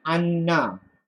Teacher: nun yang mati tadi bertemu dengan nun yang na tadi, dia kena dia akan pakai satu nun je dan nun tu disyadahkan. Jadi anna. Faham? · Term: idghamkan